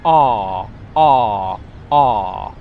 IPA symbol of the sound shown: ɑː